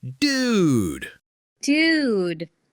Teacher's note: if I'm super impressed or shocked, I stretch that vowel sound out